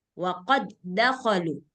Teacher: ketika dal sukun ketemu dengan da yang hidup, nah, jadi dia hilang hukum qalqalahnya.